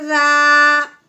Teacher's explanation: الف سے پہلے زبر آنے کی وجہ سے اب ہم نے اس کو ایک الف کے برابر لمبا کرنا ہے۔